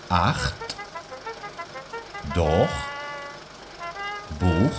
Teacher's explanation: Detrás de A o U, la CH se pronuncia como la J castellana.